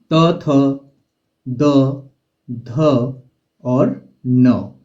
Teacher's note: ये पूरा त वर्ग आपका दंतीय होता है